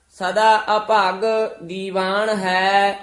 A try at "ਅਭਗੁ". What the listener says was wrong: ਅਭਾਗੀ ਉਚਾਰਨ ਕਰਨਾ, ਅਭਗ ਨਹੀਂ ਕਹਿਣਾ।